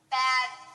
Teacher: if we change the T to a d we add our voice it changes to bad